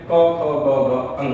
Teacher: कंठ कहेंगे वर्ग। कंठ वर्ग है यानी कि कंठ से उच्चारित होने वाले व्यंजन